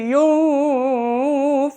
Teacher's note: Ikfa nunnya disamarkan ketika selanjutnya akan mengucapan Fa